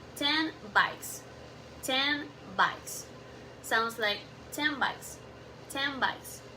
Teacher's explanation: The N changed to M because the next sound B is made with a lips. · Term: assimilation